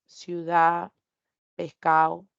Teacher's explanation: tenemos pérdida de la d entre vocales o al final de la palabra